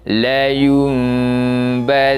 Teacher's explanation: Menandakan itu adalah bacaan iqlab. Kita gantikan bacaan nun mati itu kepada huruf mim dan dibaca dengan bacaan yang dengung.